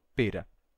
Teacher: o I breve terminou se abrindo. O I breve, né? I, ele se abriu, e ele se igualou ao E fechado. Ele ficou E.